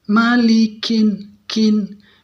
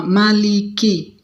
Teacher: Hamasnya bukan hanya ketika dia sukun. Dia berharokat fathah, dhamma atau kasroh, dia harus keluar sifat hamasnya. Ada anginnya ya.